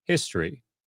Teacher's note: the accent or emphasis in the word history is on the first syllable, and we've discussed syllables at this point, so that word isn't a mystery to you, which means that you quickly move through the rest of the word, leaving that O sound with barely any pronunciation at all.